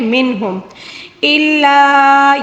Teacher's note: یہاں پر مد منفصل ہے، اس کو 3 الف کے برابر کھینچ کر پڑھنا ہوگا